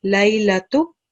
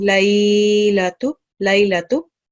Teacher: this is haruf leen, not haruf madda, so you're not supposed to prolong the sound for that long. Just read it normally, laylatu, instead of reading laylatu, laylatu.